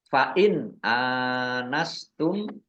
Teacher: nun sukun bertemu dengan huruf alif izhar dibaca jelas